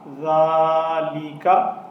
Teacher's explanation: اب اس ذال میں اس چیز کا خصوصی خیال رکھنا ہے کہ ذال کے اوپر سیٹی کی آواز نہیں ہونی چاہیے اور یہ ذال باریک پڑھا جائے گا